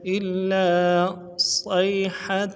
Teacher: إن كانت إلا صيحة حمزہ کو لام کے ساتھ ملانا ہے، لام کے اوپر تشدید ہے، الف مدہ بھی ہے، تشدید میں زور دیں گے، الف مدہ کو کھینچیں گے ، إلا صيحة صاد کو یا کے ساتھ ملانا ہے، صاد